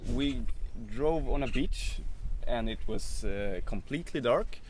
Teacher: the kind of sing-song sound is because swedish has what's known as a pitch accent